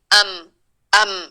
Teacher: ساکن میں غنہ کی مقدار کم ہو جاتی ہے، ام، لیکن صفت اس کی ناک میں ضرور جاتی ہے